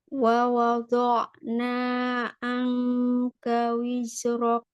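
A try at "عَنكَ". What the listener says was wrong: Jangan ang. Ambilnya makhraj ain dulu. Ang. Bukan angka. Angka itu diambil dari makhraj hamzah. Kalau a, kita ambilnya ain dari tengah. A. Ya, a. A. Ya, a.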